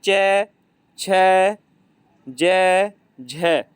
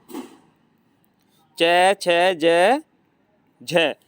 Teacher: जब हम च, छ बोलते हैं तो हमारी जीभ तालु से लगती है, इसलिए इसका उच्चारण स्थान क्या है, तालव्य